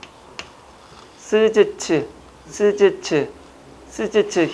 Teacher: 스즈츠. 그러면 얘는 무슨 소리일까요? 치조 소리죠.